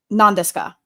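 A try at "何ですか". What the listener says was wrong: Yeah, but you pronounce the U like it's an apostrophe and not a U.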